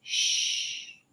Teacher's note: long sound you can make it continuously where CH you cannot CH is one short puff of air where sh can be a long sound with a long puff of air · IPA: ʃ